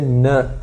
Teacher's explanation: Do N, você vai utilizar a língua encostando os alvéolos. Então, vai ser N, como T, D. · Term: Alveolar e nasal